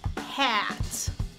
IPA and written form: hæt (hat)